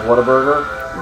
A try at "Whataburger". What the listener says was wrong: What a burger. It's not Waterburger. it doesn't have the word water in it.